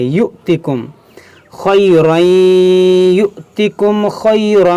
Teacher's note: یہاں حمزہ ساکنہ ہے تو اس کو جھٹکا دے کر پڑھیں گے